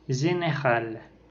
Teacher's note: c'est une voyelle antérieure mi-fermée, étirée et orale. Ce son se trouve dans le mot général.